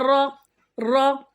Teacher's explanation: را کے اوپر زبر ہے، را کے اوپر اگر زبر یا پیش آئے تو ایسا را پر یا موٹا پڑھتے ہیں.